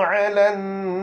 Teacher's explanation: ra tebal. Sebab apa? Sebab sebelum dia ada alif mad.